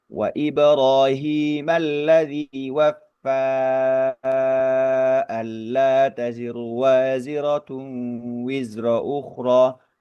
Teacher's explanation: ada bunyi panjang yang bertemu dengan hamzah dan itu memang disambung satu bacaan mau tidak mau hukum ee pertemuan antara mad thabi'i dan hamzah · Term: mad jaiz munfasil